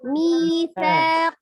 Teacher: bukan sya tapi sa, ujung lidahnya ada di ujung gigi seri bagian atas